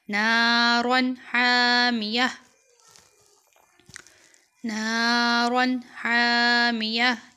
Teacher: آگے یہ تا ہے تا جو ہے وہ ہا میں تبدیل ہو جائے گی اور یہاں تنوین پر غنہ نہیں کیا جائے گا کیونکہ ہا